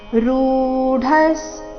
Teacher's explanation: ಸಂಕಲ್ಪ ಸನ್ಯಾಸಿ [ಸಂಗೀತ] ಯೋಗ ರೂಢಸ್ತದೋಚಯ್ಯತೆ ಯೋಗ ಎರಡು ದೀರ್ಘ ರೂಢಸ್ ಋ ದೀರ್ಘ ಡ ಮಹಾಪ್ರಾಣ ರಸ್ವ ನಂತರ ಅರ್ಧ ಸ ಇದೆ